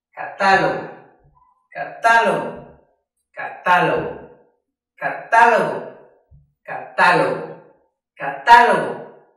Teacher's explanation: en ta es donde más vibran nuestras cuerdas vocales al momento de pronunciar esta palabra